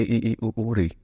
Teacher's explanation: जिन स्वरों के उच्चारण में मुंह लगभग बंद रहता है, मतलब बहुत ही कम खुलता है, तो उनको संवृत स्वर बोलते हैं।